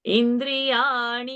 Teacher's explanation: So ni has to be murdhani and also dirgha. Indriyani, Dri is short.